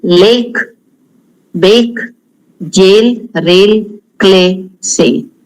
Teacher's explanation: Indian pronunciation, it is a straight single vowel.